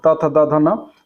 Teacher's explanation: होस्ट यह धा के परिपेक्ष में गलत है ठीक है क्योंकि धा जो होता है उच्चारण स्थान इसका ओट ना होकर इसका क्या होता है दंत होता है